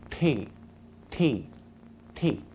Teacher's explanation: curl your tongue back and touch the roof of your mouth then Pop It Forward like this